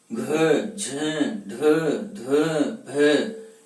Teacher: जो महाप्राण ध्वनि है उनमें अधिक समय लग रहा है · महाप्राण वर्णों का जब हम उच्चारण करते हैं तो अंत्य हकार की ध्वनि उत्पन्न होती है। उच्चारण करके देखते हैं हम घ झ ढ ध भ ये महाप्राण वर्ण है।